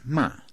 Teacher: Fourth tone, that's ma, the falling tone